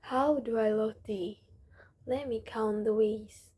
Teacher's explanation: Notice how the voice falls in the places that express calmness and rises in the place with passion. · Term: intonation